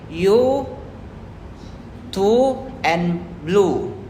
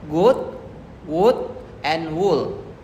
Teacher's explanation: The lips are rounded and the center and back of the tongue is raised towards the soft palate. For the longer sound, the tongue is raised higher and the lips are more rounded.